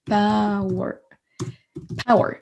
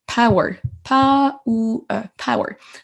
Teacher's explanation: Donc, on n'entend pas du tout de O. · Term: une diphtongue